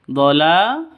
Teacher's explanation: Qala ya qaumi laysa bi dhalalah. Dhala, la panjang 2 ketukan, 2 ketuk, ada alif diawali dengan fathah. Terus tak marbuthah berubah menjadi ha mati karena waqaf. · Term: Mad asli